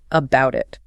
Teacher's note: The final consonant of about links to the initial vowel of it. And since about is unstressed here, the two often softens into a quick two sounding like about it. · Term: linking